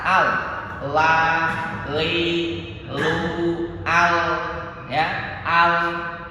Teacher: huruf lam itu makhrajnya ada di ujung lidah kita, nempel di pangkal gigi seri atas